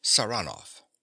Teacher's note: he pronounces the name with a stress on the second syllable